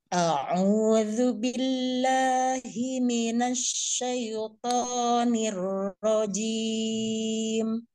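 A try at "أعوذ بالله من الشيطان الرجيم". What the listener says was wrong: Agak turun sedikit. Nirrajim, itu naik. Nirrajim, diturunkan, Bu.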